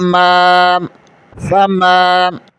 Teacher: میم زبر کے آگے الف مدہ ہے، اسے ایک الف کے برابر کھینچیں گے۔